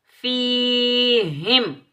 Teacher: یا ساکن سے پہلے جب بھی زیر آ جائے تو یہ ہوگا یا مدہ، اس کو ہم ایک الف کی مقدار میں کھینچ کر ادا کریں گے۔